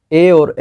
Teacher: ए और ऐ जो है वो कंठ तालु से बोला जाता है। ए बनता किससे है, तो अ और ई को मिलाने से ए बनता है, तो अ का उच्चारण स्थान कंठ हो गया, ई का उच्चारण स्थान हो गया तालु, तो ए का उच्चारण स्थान क्या होगा, कंठ तालु।